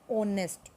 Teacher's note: the words or honest begin with a vowel sound as the initial consonant H is not pronounced or silent here